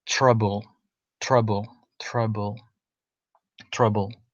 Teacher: the R is almost an invisible sound in that word.